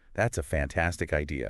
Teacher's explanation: You might naturally raise the pitch quite high on fantastic.